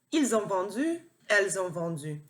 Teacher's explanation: If you're hearing a Z sound there, that's called a liaison. In French, when a word ends with an S and the next one starts with a vowel, which these all do, they're either an A or an O, the S sound kind of turns into a Z